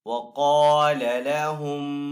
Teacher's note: قاف یہاں پہ حروف مستعلیہ میں سے تو قاف کو یہاں پہ پر پڑھیں گے۔ الف سے پہلے قاف کے اوپر یہاں پہ زبر ہے تو یہاں پہ الف مدہ ہے، تو حروف مدہ کو ایک الف دو حرکات کے برابر کھینچ کر ادا کرتے ہیں، تو یہاں پہ قاف کو تھوڑا سا کھینچ کر ادا کریں گے۔